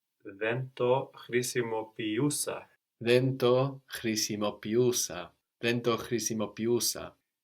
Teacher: When you add us, you shouldn't lose the E sound of χρησιμοποιώ. No, that's still there.